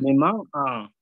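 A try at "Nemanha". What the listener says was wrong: Neman-a. No, ahí ya no. Ahí sonó a J. Neman-a, no. Neman-a.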